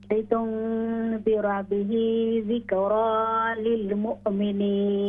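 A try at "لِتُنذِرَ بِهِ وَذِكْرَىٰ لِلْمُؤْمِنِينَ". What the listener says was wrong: ہاں جی واو رہ گئی ہے.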